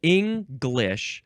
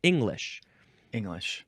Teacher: the other pronunciation has no G sound at all